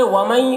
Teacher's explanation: آگے ومئی دیکھیے نون ساکن کے بعد یا ہے تو ادغام ناقص ہوگا، غنہ کے ساتھ پڑھیں گے